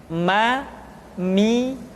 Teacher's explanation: diucapkan dengan cara merapatkan dua bibir